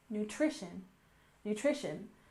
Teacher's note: And next we have nutrition with stress on the second syllable.